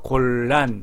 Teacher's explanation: 리을이 유음이라고 하기 때문에 이거를 유음하라고 합니다. 곤란에서 곤하고 곤의 니은하고 란의 리을이 바뀌어서 곤의 니은이 골로 바뀌었습니다.